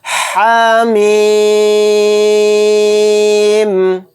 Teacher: ہا کو کم کھینچیں گے، ایک الف کی مقدار کھینچنا ہے۔ میم کو زیادہ کھینچیں گے کیونکہ میم کے اوپر مد ہے۔